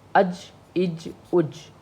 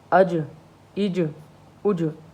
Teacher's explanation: कलकला होता है कि आखिरी लफ्ज़ को हम उभारते हैं, ज़रा झटका दे के पढ़ते हैं